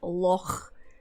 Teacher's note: So, perfect example of the kind of gutturalness of the Scottish accent is how we pronounce the word loch. So you hear that kind of raspy at the back of your throat.